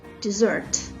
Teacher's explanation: with a stress on the second syllable